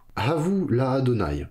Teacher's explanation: la préposition va prendre le timbre A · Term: patar